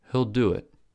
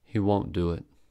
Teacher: quickly quietly at a low pitch with a schwa vowel sound the negative contractions are stressed with clearly articulated vowel sounds